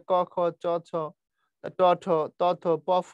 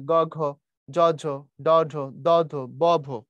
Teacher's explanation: প্রথমগুলো উচ্চারণ করলে ক খ চ ছ ট ঠ ত থ প ফ, গলা কম কাঁপে। পরের গুলোতে গলা বেশি কাঁপে, গ ঘ জ ঝ ড ঢ দ ধ ব ভ, দেখো বেশি কাঁপে। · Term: অঘোষ